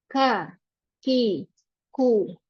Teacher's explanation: dia akan mengeluarkan sedikit angin ya atau sedikit aliran nafas